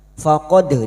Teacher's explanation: Kita wakaf di sini untuk menyesuaikan kemampuan nafas kita. Faqad dal sukun yang mati asli di tengah kalimat qalqalah sugra. Jangan lupa dipantulkan. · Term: qalqalah sugro